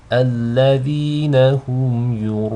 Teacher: These are both light. So you don't want the hamza to be read with tafkhim, nor do you want the ya to be read with tafkhim, just the ra. · you have one of the letters of mud, an alif, followed by a hamza in the same word. You elongate 4 or 5 counts. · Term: mud al-mutasil